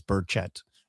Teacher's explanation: the accent on the second syllable